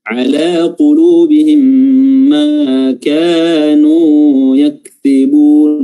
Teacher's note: Ma kanu, ya, ma-nya 2 harokat, kafnya 2 harokat, nu-nya 2 harokat